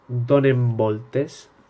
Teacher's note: El mateix passa en donen voltes, que la N canvia com si fora una M